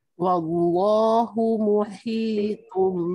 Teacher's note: baca dengan betul, pedas pada ha, tebal pada ta.